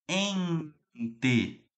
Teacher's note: O N está nasalizando o E.